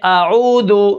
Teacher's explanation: واو ساکن ہے اس سے پہلے پیش ہے تو یہ واو مدہ ہے، اس کو ہم ایک الف کے برابر کھینچ کر پڑھیں گے